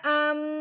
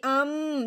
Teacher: جو میں نے منہ بند کر کے ناک میں سے آواز نکالی ہے اس کو غنہ کہتے ہیں